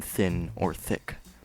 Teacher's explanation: the letter Thorne's pronunciation is the voiceless Dental fricative